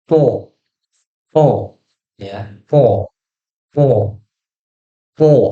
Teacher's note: Kedengaran tebalnya itu karena tadi tuh, karena lidahnya tuh lidah bagian belakangnya itu nempel sama langit-langit. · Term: sifat isti'la